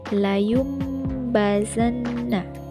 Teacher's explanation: Dalam bacaan ini, bacaan nun sukun atau tanwin berubah menjadi bunyi mim. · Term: iklab